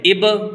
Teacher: اب ہونٹ کو چپکائیں گے نہیں، یعنی اس کی آواز کو ٹکر دیں گے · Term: قلقلہ